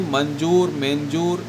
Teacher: अनुस्वार उच्चारण न के लेखे होवेला, मतलब न के रूप में उसका उच्चारण होता है अनुस्वार का, यानी कि मंजूर, मेंजूर, इस तरह से करते हैं।